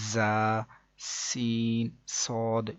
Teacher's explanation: ان 3 حروف یعنی کہ زا، سین، صاد کو ادا کرتے وقت سیٹی کی طرح کی آواز نکلتی ہے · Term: حروف صفیریہ